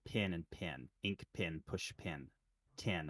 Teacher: I pronounce the short e and the short I the same before nasals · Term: pen merger